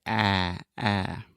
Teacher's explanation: this is a very open and front sound. So you want to open your mouth a lot, and then just imagine that you're kind of pushing everything in your mouth, your tongue, your teeth, your lips, everything to the front, and then say ah, ah.